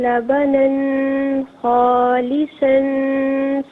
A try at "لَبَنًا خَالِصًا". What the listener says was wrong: اچھا، لبنن میں غنہ نہیں کرنا تھا کیونکہ اس کے بعد حرف علقی خا ہے.